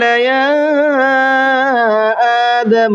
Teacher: تو اس کو 3 الف کی برابر، 1 سے 3 الف کی برابر کھینچ کر کے پڑھنا ہے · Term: چھوٹا مد